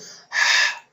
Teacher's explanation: এই হরফটি হচ্ছে হলকের মধ্যখান হইতে উচ্চারণ করতে হবে।